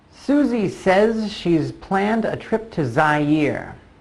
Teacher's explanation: the S at the end of says, also a Z sound, and the S at the end of she's, also a Z sound